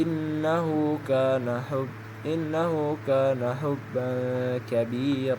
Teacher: Karena fatatain bertemu dengan huruf kaf, maka tanwin harus dibaca samar-samar. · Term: ikhfa